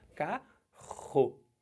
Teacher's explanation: Sai pela garganta, mas é um som só. R. Duas letras que representam um fonema.